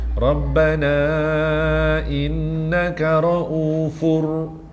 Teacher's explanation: Tapi dia tak dengung kerana berjumpa ra dan lam yang bertanda sabdu.